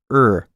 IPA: ɚ